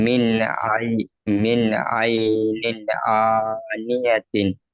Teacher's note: নুন সাকিনকে বিনা গুণায় জাহির করে পড়তে হবে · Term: ইজহার